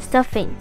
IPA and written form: ˈstʌf.ɪŋ (stuffing)